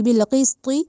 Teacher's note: آپ قاف کو موٹی قاف پڑھیں اور طا کو موٹی طا پڑھیں، تا نہ بنانا اس کو، بالقسط نہیں کہنا، بالقسط، ٹھیک ہے، تی نہیں کہا جائے گا، وہ تو تا ہو جائے گی، بالقسط ولا۔